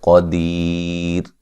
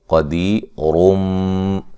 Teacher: جب وقف کریں گے تو را کو باریک پڑھیں گے ، قدیر، جب ملا کے پڑھیں گے تو پھر موٹی را